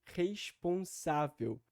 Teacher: há também ali um acento secundário que fica na sílaba res então aí nós também temos a tendência da ditongação · a ditongação no acento secundário ali no começo da palavra